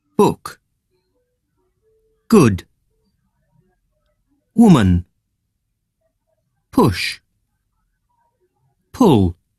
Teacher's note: other thing is the lips around it a little bit loosely the tongue is relatively relaxed and this is a short vowel sound